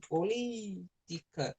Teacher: a palavra política é proparoxítona, ou seja, a sílaba mais forte ela é a antepenúltima, antes da penúltima